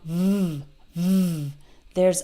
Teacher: V is a voiced sound. V, v. I'm using my vocal cords to make this sound.